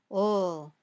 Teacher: When you say ol, the tip of your tongue touches the top of your mouth just behind your top teeth, but the sides of your tongue stay open. The air comes out around the sides of your tongue very smoothly.